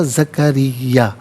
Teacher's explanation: را کے نیچے زیر را کو باریک کر کے پڑھا جائے گا